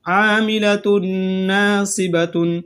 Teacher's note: یہاں تنوین کے بعد نون آ رہا ہے تو غنہ کے ساتھ ادغام کیا جائے گا